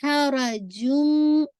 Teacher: sound of the تنوین completely مرج ہو رہی ہے میم کے اندر، تو ادغام ہو رہا ہے، اور ادغام کامل ہو رہا ہے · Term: کامل ادغام